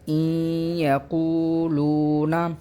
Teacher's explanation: ادغام کی صورت یہ ہے کہ ہم حمزہ کو یا کے ساتھ پڑھیں گے، نون کو ہم یا میں ملا دیں گے